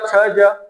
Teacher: मतलब जो च वाली लाइन है, च छ ज, तो स्पर्श तो हो रहा है लेकिन घर्षण के साथ में हो रहा है, इसलिए क्या हो गया, स्पर्श संघर्ष हो गया।